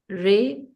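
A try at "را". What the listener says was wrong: Not Re. no Re in Arabic. Ra, Jeen, Ain. Ra, Jeen, Ain.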